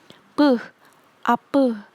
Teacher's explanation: Fonem P sesuai tabel IPA, tempat artikulasinya di bilabial, dan cara artikulasinya secara plosif atau letupan. P, ape. Bilabial itu dua bibir.